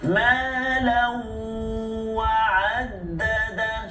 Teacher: Tanwin baris dua atas tu bertemu dengan waw, idgham ma'al ghunnah. Masukkan bunyi tanwin itu ke dalam huruf waw berserta dengan dengung.